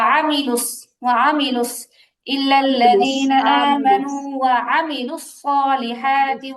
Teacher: আমিলু আইনে টান হবে না